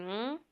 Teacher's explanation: Kipua cha kaakaa laini, ambacho ni ng